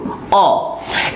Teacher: ध्यान दीजिएगा। मध्य स्वर, ऐसे स्वर जिनका उच्चारण जिह्वा के मध्य भाग, जो आपका जीभ है उसके मध्य भाग से करते हैं, तो इसे कहा जाता है मध्य स्वर।